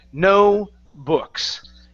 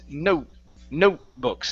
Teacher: when I say note, my tongue goes to the top of my mouth and stops. Okay, so that's the difference. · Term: half of the T